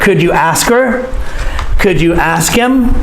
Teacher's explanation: i'm not saying him i'm saying m together with the previous word